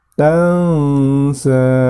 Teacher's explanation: Tansa, di situ terdapat hukum bacaan ikhfa. Nun mati atau nun sukun bertemu dengan huruf sa, maka dibacanya harus mendengung ya.